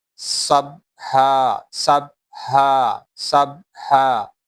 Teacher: While reading Sin, whistle sound will comes out, and Sin is light letter.